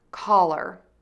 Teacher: To say kʌlər, start by saying k. Move to an ah made with relaxed mouth and tongue. End with lr by touching the tip of the tongue to the back of the top front teeth, then pull it down while rounding your lips for the r.